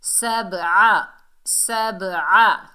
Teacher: سبع، سبع، سین کو سختی سے ادا کریں گے. با حروف قلقلہ میں سے ہے، ڈبل ساؤنڈ آئے گی، عین کو حلق کے درمیان سے ادا کریں گے.